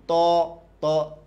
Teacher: জিহ্বার আগা দাঁতে লাগবে। বলেন ত, ত, জিহ্বার আগা দাঁতে লাগবে ত।